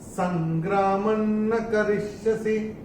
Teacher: ये जो अनुस्वार आ रहा है इसके बाद का अक्षर है न, और अनुस्वार के बाद जब न आता है तो अनुस्वार का उच्चारण होगा न